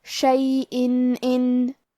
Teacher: آخری میں حمزہ کے نیچے تنوین زیر ہے، پھر حرف الالف ہے کلمت ان، الف حروف الاظہار میں سے ہے اور اظہار کا معنی ہے ظاہر کرنا، اور کیونکہ تنوین کی اصلیت نون ساکن ہے تو ہم یہاں تنوین ظاہر کریں گے اور اسے نون ساکن پڑھیں گے اور بغیر غنہ سے یہ حکم کو ادا کریں گے